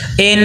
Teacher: نون مشدد کو ناک میں غنہ کر کے پڑھنا ہے